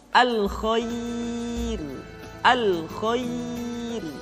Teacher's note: Termasuk yang berikutnya adalah ra dibaca dengan tipis ketika didahului oleh huruf ya yang sukun